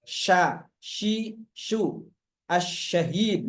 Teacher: Sya syi suu ya. Keluar ee makhrajnya keluar dari tengah lidah menempel langit-langit ditambah dengan menghamburkan udara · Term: tafasi